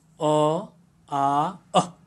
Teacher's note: ये जो स्वर हैं अ, आ और अह ये कंठ से उच्चारित हो रहे हैं